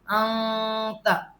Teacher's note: قرآن میں وہ جگہ انتا کنتا ہے نا، تو یہ ان کیا ہے، اخفا غنہ، انتا، ان یہاں پہ تھوڑی سی ناک میں آواز آئے گی